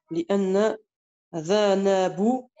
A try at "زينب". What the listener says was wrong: Non, lis bien ce mot-là. T'as confondu. T'as dit Dhanabou. C'est pas Dhanabou, il y a écrit autre chose. Ouais.